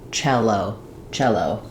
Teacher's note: First syllable stress, so chel is long and O is short.